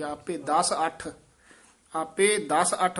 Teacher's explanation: ਦਸ ਪੋਲਾ ਬੋਲਣਾ ਅੱਠ ਕਸ ਕੇ ਬੋਲਣਾ